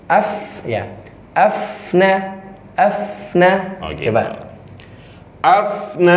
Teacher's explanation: bibir bawah bagian dalam bertemu gigi atas Jadi hampir gigi seri tidak terlihat